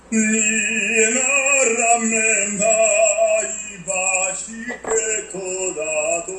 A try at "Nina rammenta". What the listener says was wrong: Nina rammenta, closed. Not no tongue. It's closed as the vowel Italian E. Completely relaxed. Don't move your tongue. Your mouth and the tongue are not involved in it. The tongue doesn't move.